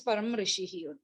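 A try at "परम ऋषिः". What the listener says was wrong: Parama Rushihi, not Param. Parama Rushihi. You cannot eat the akara. So Parama Rushihi.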